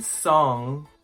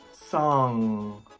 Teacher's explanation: for the ng sound like in song my tongue is touching the back of my mouth that is why we hear this sound come from deep within